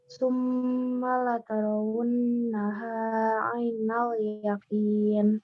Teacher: mim bertasdid itu sama dengan nun bertasdid. Dia gunnah, ditekan, dan ditahan agak lama.